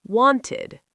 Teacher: Sound 3, id, like id, when the verb ends in T or D.